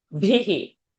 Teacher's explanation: So this bhihi mahaprana has to come.